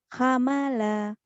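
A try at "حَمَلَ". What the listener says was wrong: Salah, nggak ada yang panjang. Hamala, Hamala, hamala, Hamala,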